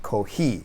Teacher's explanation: So this actually came out as simply an H, ko-Hi, also with a bit of that breathy sound. And going out to the west here, this is where we see that K sound, often written as a C.